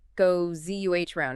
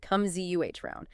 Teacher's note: And for what goes around comes around, the key pronunciation point is a very common sound transformation. The s at the end of words like goes and comes often changes to a z sound when it's immediately followed by a vowel sound like the a in a round. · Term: natural phonetic assimilation